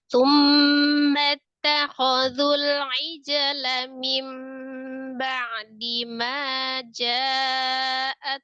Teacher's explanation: Lanya itu langsung disambung dengan mim ba'dinya.